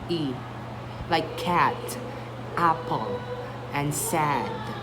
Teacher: The jaw drops and the tongue is low in front. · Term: short A